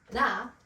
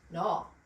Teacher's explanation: when we change the vowel sound of ah and aw, it makes a completely different word